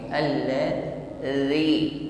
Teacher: Huruf dal tidak berdesis, bukan allazi tetapi alladzi. Pertemukan ujung lidah dengan gigi sari atas.